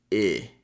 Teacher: it's not an e sound. It's I as in sit. So a more relaxed sound than e. So the tongue is not going to be so high and tense.